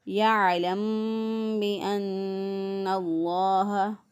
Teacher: اب عین جو ہے اس کو وسط حلق سے ادا کریں، گلے کے درمیان سے عین ادا ہوتا ہے، رگڑ کھاتی ہوئی آواز میں زبان کے پچھلے حصے کو جہاں سے زبان جڑی ہوئی ہوتی ہے اس کو نیچے کی طرف دباتے ہوئے رگڑ کھاتی ہوئی آواز میں عین نکالیں۔